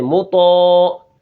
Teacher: اب تو کے آگے الف ہے تو الف بھی موٹا ہوگا اور تو بھی موٹا ہوگا